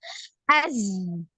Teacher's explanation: Jadi lidah bawah, ujung lidah anti ini nempelnya di gigi seri bawah. Az, Jadi sama seperti ketika kita mengucapkan huruf Z ya di bahasa Indonesia.